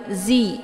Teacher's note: gigi ataupun gusi Zi Zi ya dan dia sifatnya adalah saofir maka ada bunyi angin ataupun suara siul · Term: huruf Za